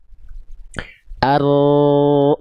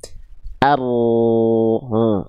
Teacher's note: Nah, si furjah atau celah kecil ini untuk jalur suaranya huruf ro. Huruf ro kan punya sifat sedikit mengalir suara atau nama sifatnya tawas. Nah, sifat tawas itu jalurnya lewat sini.